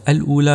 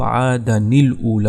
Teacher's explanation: ملا کر جب پڑھنا تھا تو حمزہ وصلی نے گر جانا تھا، تو آدن، دن، یہ دن نون ساکن ایک اور اللام ساکن، یہ دو ساکن جمع ہو گئے، لہذا ہم نے ایسا کیا کہ تنوین کو گرا کر ایک حرکت دے دی، آدا ہو گیا، پھر جو اس کا نون تھا تنوین کا اس کو زیر دیتی تو عادن الاولی ہو گیا۔